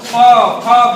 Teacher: फ फ बोलेंगे तो ओठ क्या करेगा, आपस में टच होगा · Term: ओष्ठो